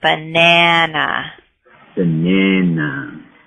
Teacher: the second syllable in that word is stressed, and we stress the A sound